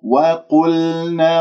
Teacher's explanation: وقلنا قاف مفخمة مرتبة ثالثة لأنها مضمومة